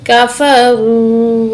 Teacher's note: काफ़ारू, काफ बारीक है, काफ ज़बर का, फा ज़बर फा, रा पेश वाव रू, काफ़रू, वाव साकिन, उससे पहले पेश हरूफ़ मद्दा, एक अलिफ की मिकदार खींचेंगे